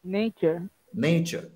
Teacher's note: ন্যাচার হবে না, অ্যা হবে না, ওই যে নে এ হবে